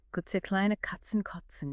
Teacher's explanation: This combines that hard K stop with the City affricate like the T sound in cats. Right, Kotz involves a stop, then a friction sound, right at the alveolar ridge, the bit behind your teeth. So you're constantly bouncing between the back of the mouth for K and the front for Ets.